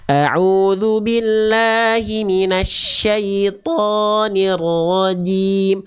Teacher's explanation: Jim, jangan cim, tapi a'udzu billahi minasyaitonir rajim. Huruf jim itu dilafalkan dari tengah lidah, disentuhkan ke langit-langit. Jangan sampai ada percikan-percikan nafasnya bunda.